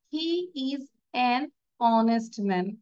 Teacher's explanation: কারণ কি, উচ্চারণটা আমরা হ বলি নাই, অ বলেছি।